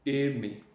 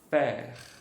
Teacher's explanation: Pode ser tanto E, mais fechado, E, ou então o som de E, mais aberto.